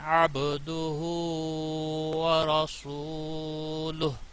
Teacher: عین یہاں عین وسط حلق والا ہے، حروف حلقی میں سے گویا کہ عین اور ہا وسط حلق والے دونوں ہیں.